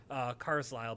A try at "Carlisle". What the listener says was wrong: The S is silent. It's Carlisle.